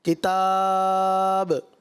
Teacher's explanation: مد عارض یعنی 3 الف کم سے کم آپ اس کو کھینچیں، ورنہ کم 2 الف کھینچیں یا 3 الف کھینچیں.